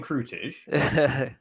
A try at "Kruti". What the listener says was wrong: In Polish, we say Kruti. Kruti, yeah. So we don't say J as a Krutic. We say just Yot, Yi, just like that.